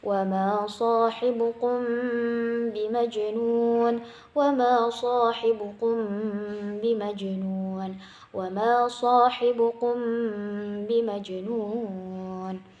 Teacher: Nah, jadi bacaannya itu ikhfa samar-samar gitu kan ya, tidak jelas. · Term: Ikhfa sapawi